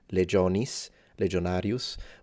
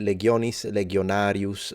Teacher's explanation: and so you would say legionis legionarius but it's legionis legionarius so legionarius with a G sound is the original classical Latin